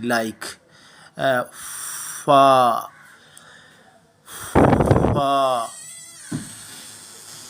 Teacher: فا کے مخرج کی بات کریں تو فا کی آواز جس طرح ہم پھونک مارتے ہیں کسی چیز کو، اس طرح ہم ہونٹوں کو ہمیں گول کرنا پڑتا ہے۔ تو ہونٹوں کو گول کرتے ہوئے ہم ہوا کو باہر نکالتے ہیں، اس طرح کی آواز فا کی